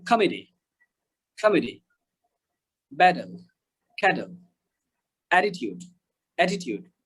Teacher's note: যারা American accent follow করবেন তারা টিটা ডি উচ্চারণ করবেন, যেমন কমেডি, কমেডি, ব্যাটল, ক্যাটল, অ্যাটিটিউড, অ্যাটিটিউড।